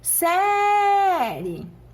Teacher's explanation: semivogal + vogal o som cresce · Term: ditongo crescente